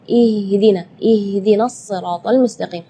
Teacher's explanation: makhraj huruf ha itu adalah dari tenggorokan jadi Keluarnya tipis · Ya, itu tidak boleh, itu keluarnya dari dada. Sedangkan makhraj huruf H itu adalah dari tenggorokan. Jadi keluarnya tipis karena H itu termasuk huruf di antara 28 huruf hijaiyah yang paling lemah adalah huruf H.